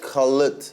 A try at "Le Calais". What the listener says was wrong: Le Calais. No, the T is silent. Le Calais.